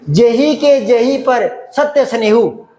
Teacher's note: यहां जे को लघु मात्रा में मानेंगे क्योंकि इस पर जोर नहीं पड़ रहा, बलाघात नहीं हो रहा।